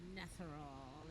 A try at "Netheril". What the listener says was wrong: I know I'm stoned, but you pronounce that word Netheril as if it had an A in it. You're aware it doesn't have an A in it, right?